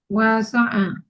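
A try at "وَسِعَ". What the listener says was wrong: kursinya bukan fathah, tapi kasroh. Wasi'a, ya kan?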